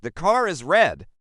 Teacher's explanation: if a British speaker says the car is red, they will pronounce the R in car because it links to the vowel in is.